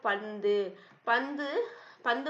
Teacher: நாவின் நுனி மேல்வாய் பல்லின் அடிப்பகுதியை தொடுவதுனால நகரம்